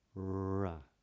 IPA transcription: r